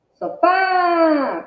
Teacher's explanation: Qual é a maior intensidade? É o fá. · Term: sílaba tônica